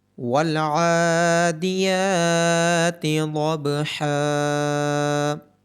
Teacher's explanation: عین کے اوپر کھڑی زبر، یا کے اوپر کھڑی زبر اور حا کے بعد الف مدہ ہونے کی وجہ سے ان تینوں کو لمبا کیا جائے گا۔ ضاد کی آواز موٹی آئے گی اور با پہ قلقلہ ہوگا۔